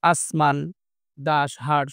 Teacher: তো ফলে ফুসফুসের আগত বাতাস বাধা পায় ও সংকীর্ণ পথে বের হয়ে যাওয়ার সময় ঘর্ষণের সৃষ্টি করে। তো বাতাসের ঘর্ষণের ফলে উচ্চারিত হয় বলে এগুলোকে ঘর্ষণজাত ধ্বনিও বলে